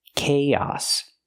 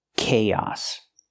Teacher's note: We link the 2 vowels with the y sound like yes and yesterday. Together, chaos.